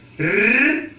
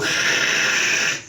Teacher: parece que é um R que vem aqui da garganta. Isso tudo é regionalismo. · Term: gutural